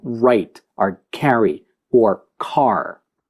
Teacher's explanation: It's called the retroflex because when you're producing it, the tip of the tongue slightly bends backwards. And that's what retroflex means.